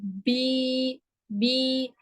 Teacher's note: आपका जबान का दरमियानी हिस्सा जो है वो ऊपर की तरफ उठ जाएगा। आप पढ़ेंगे जब बी, बी, ये आपकी थोड़ी जो होगी ना वो नीचे की तरफ थोड़ी सी खिसकेगी और जबड़ा थोड़ा सा पीछे की तरफ जाएगा, ठीक है। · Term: या मद्दा